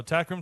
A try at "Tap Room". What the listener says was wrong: Tap room with a P.